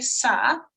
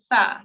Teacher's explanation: So your teeth help in expressing this letter. Your tongue, the tip of your tongue touches your top teeth, but the very bottom of them, and you say tha.